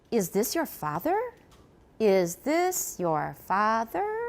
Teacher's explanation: phi is usually on a lower pitch than the last syllable so fa is of course lower than er